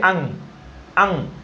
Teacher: जो अनुस्वार का उच्चारण है वो कंठ से सीधा नाक में आता है।